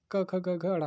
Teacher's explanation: क ख ग घ ड़ा, तो ये कंठ से निकलने वाले शब्द हैं